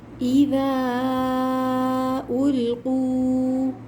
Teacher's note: اذا میں ذال کو نرمی کے ساتھ ادا کریں گے اور زبان دانتوں کے درمیان میں آئے گی۔ اذا کے بعد جو الف ہے اس پہ مد ہے تو ہم اس کو کھینچیں گے۔